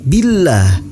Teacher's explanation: In kuntum tu'minuna billah, hukum bacaannya yaitu tarkik. Billah, lafaz Allah dibaca tipis dan dipanjangkan 2 harokat.